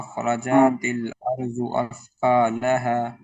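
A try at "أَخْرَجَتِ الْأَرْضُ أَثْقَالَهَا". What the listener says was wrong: जीम पर ना जीम पर जबर है इसको भी खींचेंगे नहीं खींचेंगे तो अलिफ बन जाएगा ये व अखरजतिल अर्ज़ु अस्क़ालहा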